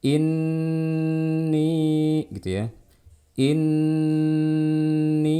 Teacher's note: nun bertasydid dibaca dengan gunnah yang panjang